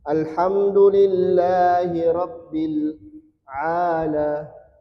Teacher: mad ketemu huruf yang sukun karena wakaf, maka minya ini boleh dibaca 2 4 6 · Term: mad arid lukun